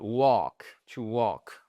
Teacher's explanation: On ne prononce pas le L.